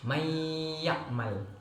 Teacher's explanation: apabila nun mati bertemu dengan ya setelahnya, maka dibaca disertai dengan dengung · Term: idgham bi gunnah